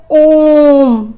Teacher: जब हम ॐ बोलते हैं तो बहुत देर तक हमारे मुख से ध्वनि निकलती रहती है